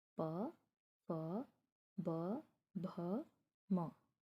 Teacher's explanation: अब देखिए उसके बाद हमारा ओष्ठ, यानी दोनों होठों को मिलाने पर जो उच्चारित हो। जब हम बोलें तो हमारे दोनों होठ मिलने चाहिए,